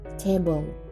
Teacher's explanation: Let the air pressure build up. Quickly remove the tip of the tongue to let the air out suddenly. There should be no vibration in the vocal cords.